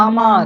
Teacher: এখানে আমার শব্দের যে আ আছে, সেই এর স্বরদৈর্ঘ্য কিন্তু বেশি।